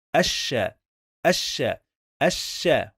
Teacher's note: always when we have lam shamsiyya, the followed letter must get shadda. So that's why we pronounce sheen 2 times.